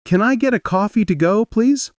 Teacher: Rising slightly on coffee, falling at please.